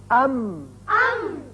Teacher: اب اس کا میم، ام. اب ہونٹوں کا خشکی کا حصہ ملا تو میم ادا ہوا